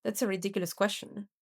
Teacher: Now, when Dwight says, that's a ridiculous question, he uses fall rise because he thinks everyone should know the answer